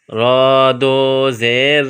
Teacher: را، را پر 2 زیر تنوین ہے، پہلے بتلا چکا ہوں کہ را پر جب زبر یا پیش ہو، یا 2 زبر یا 2 پیش ہو تو اس را کو موٹا پڑھتے ہیں، اور را پر جب زیر یا 2 زیر ہو تو اس را کو باریک پڑھتے ہیں۔ یہاں را پر 2 زیر ہے، تنوین ہے، یہاں اخفا کریں گے اور را کو باریک پڑھیں گے